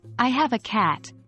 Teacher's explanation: of completion for example in the sentence I have a cat your voice should drop on the word cat signaling that you've finished your thought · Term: falling intonation